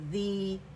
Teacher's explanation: ذی یا مدہ، ذی 2 کاؤنٹس. ذی، ذال کسرہ، ذی، اینڈ جب مد ہوگا کسرہ ڈبل ہو جائے گی تو یا مدہ بنے گا.